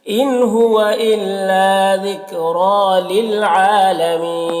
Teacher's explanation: ذکر را کو پر پڑھیں گے، کھڑا زبر ہے، ایک الف کے برابر کھینچیں گے. للعالمین عین میں کھڑا زبر ہے، ایک الف کے برابر کھینچیں گے. یہاں پر وقف کی صورت میں مد عارض وقفی ہوگا، اس طرح سے پڑھیں گے.